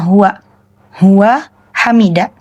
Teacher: Dan dalam istilah ini disebut taukid, penegasan untuk pelaku. Jadi, biasanya intonasinya itu dalam pengucapan biasanya sedikit ditekankan pada kata hua hua hamida seperti itu.